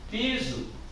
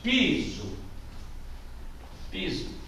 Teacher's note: Piso tem a sua primeira sílaba mais forte. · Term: palavra paroxítona